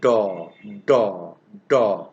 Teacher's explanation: There is a kind of restriction at the beginning and then let it pass. This is plosive.